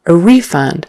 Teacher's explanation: So accent on the first syllable